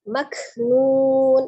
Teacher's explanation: Maknun, ada huruf kaf sukun ya, sifatnya al-hamas, ada udara yang mengalir ketika mengucapkan huruf kaf tetapi tidak berlebihan ya, mengalirnya udara bukan mengalirnya suara. Nun, hati-hati ketika ujungnya nun, jangan disukunkan nunnya ketika posisi bibir kita sedang maju ya, mengucapkan dhammah nun, tapi kembali, harus dikembalikan ke posisi semula untuk sukun nunnya.